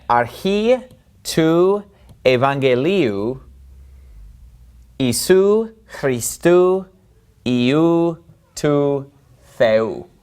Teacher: Now, the first thing you're probably going to notice about this verse is that everything seems to end in ou. Except for the first word, archi, everything else ends in that oo sound, which is made by the omicron epsilon diphthong that we talked about in the video on the alphabet.